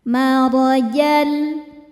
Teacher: Marajal, maro, ro dibaca secara tafkhim karena harokatnya di atas yaitu harokat fathah, cara bacanya ditebalkan.